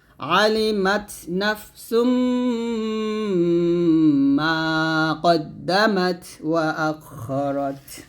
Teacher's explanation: তো এখানে 2টা পেশ বাদ দিয়ে আমরা একটা পেশ নিব, একটা পেশ নিয়ে আমরা মিলাই পড়বো এবং গুণনা করবো।